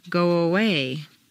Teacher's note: if a word ends in O, your lips are going to be in the forward position, so a W, a W, quite naturally leads into the next sound. Go away. You don't want to say go away and break the undercurrent of your voice. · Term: W glide